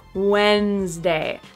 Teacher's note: that syllable after the first one, also known as the second syllable, disappears because the first syllable is so strong. So remember this grouping of most mispronounced words because there are syllables that completely disappear and we have to pay really close attention to the stressed syllable.